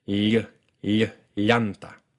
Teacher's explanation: the sides of your tongue come down a little bit and allow air to flow in the gap between your tongue and your upper teeth on both sides of your tongue. This produces a sound that's kind of like a combination between an L and a Y. · This is basically the exact same position as ny. Your tongue is raised in the middle, touching your hard palate.